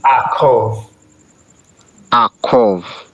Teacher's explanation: The ayin is silent, so it's just like an aleph would be akov.